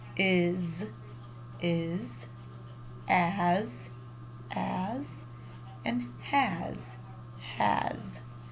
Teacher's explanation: s and the let's feel our throats for the z sound is it voiced or unvoiced it's voiced we feel that vibration in there